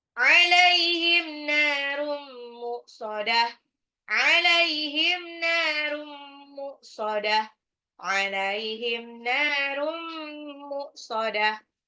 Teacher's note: ambil gunah langsung lebur ke mim tapi ditahan